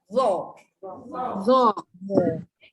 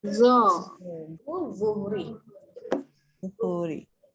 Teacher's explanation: Sama dengan sa dengan zal. Okey, sebelum sebut, keluarkan sedikit lidah. Kemudian sebut tebal huruf dia tebal.